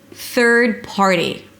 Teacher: bring the tongue up for the th and pull it in immediately for the R. There is no vowel in the middle: th'r, th'rd.